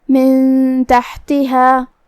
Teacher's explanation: حا کی ادائیگی حلق کے درمیان والے حصے سے ہے، جو کہ اس پہ جزم ہے تو ہمیں حا کو ظاہر کرنا ہے.